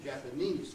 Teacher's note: takes the stress on the final syllable, the main stress. Of course, it has a subordinate stress, it has an extra stress as well.